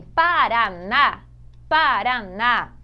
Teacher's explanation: a sílaba mais forte em Paraná, em café, é a última sílaba. Essa é a sílaba tônica, a última.